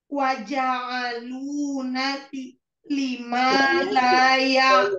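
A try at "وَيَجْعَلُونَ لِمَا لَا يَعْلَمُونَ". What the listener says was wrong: Wayaja'alu. Wayaja'alu. Bukan waja'alu ya.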